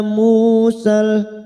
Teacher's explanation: mu duma bertemu waw sukun 2 harokat kita panjangkan